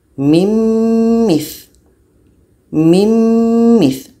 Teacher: nun mati bertemu mim, bunyi nun masuk kepada bunyi mim. Mim mith. Mim mith dan diiringi dengan dengung.